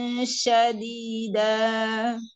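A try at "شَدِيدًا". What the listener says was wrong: Di kata syadida, Umi cukup dua rakaat matobi'i. Syadida, cukup dua rakaat ya. Tadi kepanjangan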